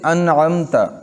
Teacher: یعنی اپنے مخرج سے بلا غنہ ظاہر کی جائے گی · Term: اظہار شفوی